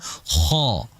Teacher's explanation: Huruf kha adalah huruf yang keluar dari tenggorokan bagian paling atas atau adnal halqi. Yang huruf kha juga adalah huruf yang mufakham, huruf yang tebal, sehingga dibaca kha, bukan kha, bukan kha.